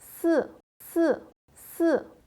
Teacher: sa prononciation descend rapidement et bref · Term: 4e dont, quatrième ton